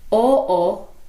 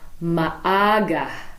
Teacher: glottal stops between vowels and they're not indicated